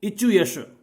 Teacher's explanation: इचु यश में ई, च वर्ग, य और श इनका उच्चारण स्थान हुआ तालु